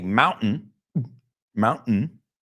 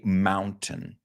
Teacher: I naturally do that glottal thing it's very American